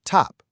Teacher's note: Sometimes it's a strong crisp t like at the beginning of the word top.